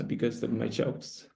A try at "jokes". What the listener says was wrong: Jokes sounds a bit like jobs here, right? Candidate's phonological range with consonants is a little bit weak. Just tell me, do you hear jokes or jobs? Almost like jokes. So candidate quite a few times has mixed up the consonants.